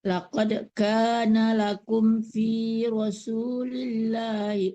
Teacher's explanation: jangan ditahan di kum, tidak dengung ya.